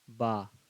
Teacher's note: پہلے ہونٹ سٹ رہا ہے اس کے بعد کھل رہا ہے، تھوڑا کھینچ کے پڑھیں گے.